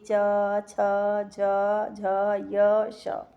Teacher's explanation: ये सब चीज़ें तालु से उच्चारित होती हैं